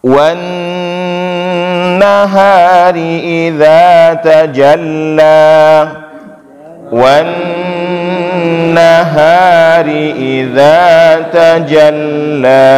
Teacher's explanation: Nah, di awal itu di wan-nahar itu ada nun yang bertasydid. Nah, itu namanya wajibul gunnah.